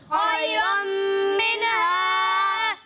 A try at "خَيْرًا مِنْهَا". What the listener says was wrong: منها نہیں، ٹھیک ہے نا، نون میں آواز کو ہلانا نہیں ہے. منها یہ کلکلہ کی طرح آواز کو ہلانا نہیں ہے. ٹھیک ہے، منها خيرا منها